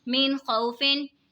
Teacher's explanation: یہاں پہ دیکھیں جی نون ساکن ہے، نون ساکن کے بعد حروف حلقی کا خا ہے تو اظہار ہوگا، یعنی غنہ نہیں کریں گے، نون ساکن کی آواز کو بالکل ظاہر کر کے پڑھنا ہے